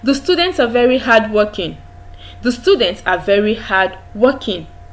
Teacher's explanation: it goes down there is a drop in the pitch of your voice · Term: falling tone